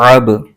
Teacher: حروف قلقلہ کو ادا کرتے ہوئے مخرج میں جنبش سی ہوتی ہے جس کی وجہ سے آواز لوٹتی ہوئی نکلتی ہے۔ جس طرح گیند دیوار کے ساتھ ٹکرا کر واپس پلٹتی ہے، ایسے ہی حروف قلقلہ کو پڑھتے ہوئے آواز واپس پلٹتی ہے۔